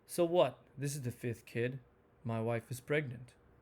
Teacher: when it's disinterest, boredom, or disappointment, the intonation tends to fall. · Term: falling intonation